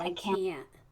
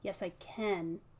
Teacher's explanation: The N is a different N. Yeah, it's that NT nasal sound as opposed to that regular N.